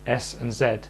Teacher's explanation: zed is a voiced version of s which means the vocal folds come together to make sound your tongue is still doing exactly the same thing and going